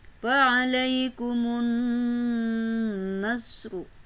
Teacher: alif lam samsiyah karena ada alif lam bertemu dengan huruf nun bersyaddah